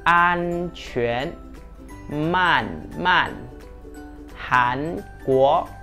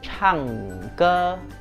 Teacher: khi nói an mình phải để lưỡi của mình ép vào hàm trên và khi phát âm ang Mình phải sử dụng âm mũi